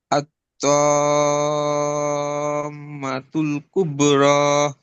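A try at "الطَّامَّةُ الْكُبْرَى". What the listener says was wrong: কুবে, কলকলা হবে না? বাইরের উপর সাকিন, কুবে র। উব্র না তো, কুবে, কুবে কলকলা করলে কি হবে? কুবে।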